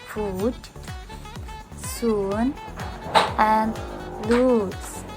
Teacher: The nearest cardinal vowel to this is number 8, u. But BBC u is much less back. But BBC u or long vowels is much less back and less close, while the lips are only moderately rounded.